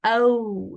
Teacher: the lips are protruding a little bit · this WOW has the rounding of the lips you can see here um the lips are protruding a little